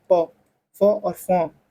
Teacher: ओष्ठ आता है दोनों ओठों से।